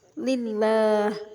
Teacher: karena ada lam jalalah lillah didahului kasrah Li lillah cara membacanya lafaz Allah dibaca tipis tarkik